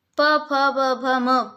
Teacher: प वर्ग पूरा होठों की सहायता से ही बोला जाता है।